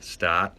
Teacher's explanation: that's much more fronted we could call it start fronting so we'll have a boston accent that doesn't have that r sound it's kind of just a vowel at the front